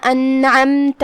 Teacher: آخری میں تا پہ زبر ہے، ہم تا کو زبر سے ادا کریں گے، اپنی آواز لمبی نہیں کریں گے تاکہ مد الف نہ ظاہر ہو.